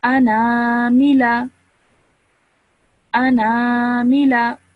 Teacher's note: I am stretching my sound for 2 seconds because this is an alif madda.